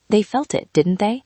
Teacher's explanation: In this story, the question tag with falling intonation creates a beautiful effect.